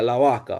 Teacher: Esos consonantes se relajan cuando la gente habla rápido o como en su estilo natural, como en el flow state que decimos nosotros. La B puede ser muy suave, como casi se puede perder también. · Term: debilitamiento de consonantes oclusivas